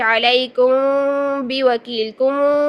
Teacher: آواز ناک میں ہی جاری ہے، وائبریشن ہو رہی ہے ہونٹوں میں بھی، لیکن ایک چھپی ہوئی آواز ہے، ٹھیک ہے، پراپر گنگنی آواز نہیں ہے۔ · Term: اخفا شفوی